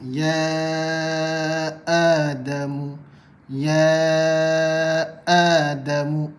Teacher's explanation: hamzah dan ha keluar daripada bahagian pangkal kerongkong